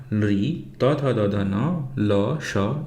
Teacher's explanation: इन वर्णों के उच्चारण दंत दांत के स्थान से होते हैं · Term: दन्तयाः